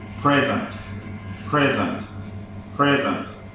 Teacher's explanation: if you say present you see the the stress is at the beginning of the word